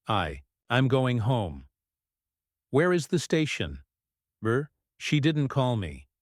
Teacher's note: up at the end falling intonation arm statements and way questions your voice Falls at the end for statements and wh questions